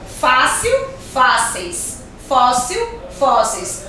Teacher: Palavras que são terminadas em IL, quando aquela palavra for paroxítona, ou seja, a sílaba mais forte, a sílaba tônica é a penúltima